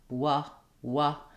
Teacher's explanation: for an ooh and then opening to an uh w w my lips start very pursed and then they open up · gliding between the shape of your mouth for an ooh and then opening to an uh w w my lips start very pursed and then they open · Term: sound of w, Glide